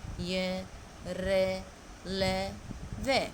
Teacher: इनका उच्चारण करते समय जीभ मुंह के किसी भाग को भी पूरी तरह स्पर्श नहीं करती। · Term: अंतस्थ व्यंजन